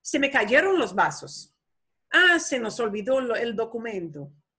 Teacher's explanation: Start up and go down, it's a statement. The pitch of your voice start going high and goes down. It's a statement.